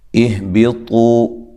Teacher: حمزہ کو تحقیق سے تو واو مدہ اور طا کو خوب موٹا کرنا ہے